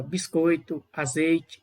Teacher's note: toda a emissão de voz o ar sai pela boca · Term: ditongo oral